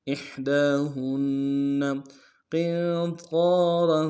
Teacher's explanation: را کے اوپر تنوین غنہ کریں گے